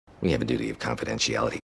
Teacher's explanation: We have a dropped H, really light V sound connecting into the schwa.